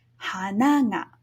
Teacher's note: This is an odaka pattern where ha is low, na is high, and then the pitch drops again for the particle ga.